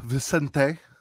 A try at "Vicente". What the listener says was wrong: Vicente, there's no N.